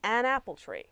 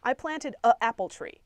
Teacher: avoid having that funny glottal stop noise